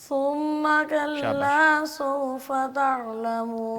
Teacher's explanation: تھا کو جو ہے نا بڑی نرمی سے پڑھتے ہیں، زبان کی کو باہر نوک نکال اوپر والے دو دانت اور نیچے والے دو دانتوں کے درمیان میں زبان کو لگائیں گے نرمی کے ساتھ